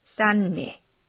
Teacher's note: 음절의 끝소리 규칙에 의해서. 그리고 디귿이 뒤에 있는 비음 니은의 영향을 받아서 니은으로 바뀝니다. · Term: 비음화